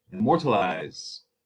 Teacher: Unaccented, accented, unaccented, accented. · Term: iamb